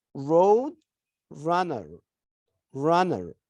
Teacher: In American English, they pronounce the R sound, whether it is at the beginning or in the middle or at the end.